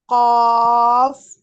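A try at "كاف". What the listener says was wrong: نہیں، اس کو موٹا نہیں کرنا، یہ باریک کاف ہے. کاف.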